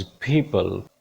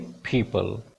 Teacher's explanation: थोड़ी सी aspirated sound आ जाती है